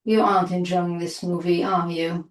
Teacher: if we use a falling intonation, we're just asking for confirmation of our statement.